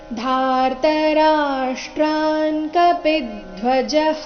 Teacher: ರಾಷ್ಟ್ರಾನ್ ಧಾರ್ತ ರಾಷ್ಟ್ರಾನ್ ಆದ ನಂತರ ಅಲ್ಲಿ ಅರ್ಧನ ಕಾರ ಇದೆ ಮುಂದೆ ಕಪಿದ್ಧ್ವಜಹ ಪಿ ರಸ್ವ ಬಂದು ಆಘಾತ ಬರಬೇಕು